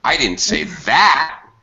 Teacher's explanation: i need to fall on the last word that's called final falling intonation